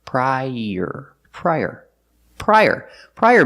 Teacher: i pry and er like Burger link The Sounds together prior use the Y sound like in yellow to link the two vowels